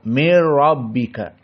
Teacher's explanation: Dan bila gunnahnya idza kana iltaqa ma'a nun sakinah ma'alam aw ra. Maka di sini mir rabbika idgham masuk idgham. Nun kepada ra, mir rabbika. Namun tidak ada gunnah.